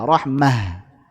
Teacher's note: Saat waqaf maka hanya bisa dibaca dengan hak saja, rahmah.